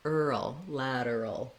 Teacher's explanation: If the vowels are confusing to you, you can think about saying a word like at lateral or ad lateral to get that A sound correct. To do the earl, you have to go in and out of that R and to that dark L.